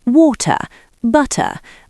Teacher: In the UK, we keep the T sharp.